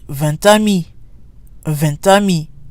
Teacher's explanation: the t is pronounced because it's followed by a vowel